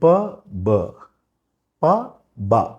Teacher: ప, బ, ప, బ రెండు పెదాల నుంచి వస్తుంది.